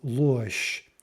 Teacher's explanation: We just get a simple devoicing to a sh. That soft sign isn't really doing anything there in terms of pronunciation.